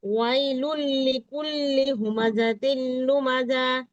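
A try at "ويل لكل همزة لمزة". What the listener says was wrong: লুমাযা, লুমাযা টান হবে না।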